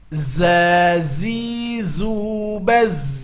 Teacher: Kalau tadi harus keluar ujung lidah, sekarang tidak. Ujung lidah nempelnya ke gusi bawah dan kedua gigi ditautkan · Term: huruf za